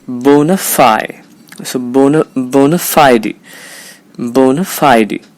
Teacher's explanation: Remember, the primary stress is on the syllable fi.